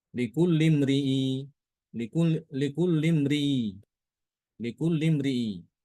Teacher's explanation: mengganti hamzahnya dengan huruf ya